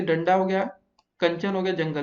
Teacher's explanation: अनुस्वार के उच्चारण में वायु नाक से निकलती है और उच्चारण झटके के साथ होता है